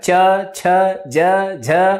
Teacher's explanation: च में देखो तालु आ रहा है